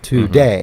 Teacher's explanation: a collection of two syllables that are unstressed and then stressed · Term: iamb